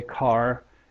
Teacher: The degree of post-vocalic R in North America is higher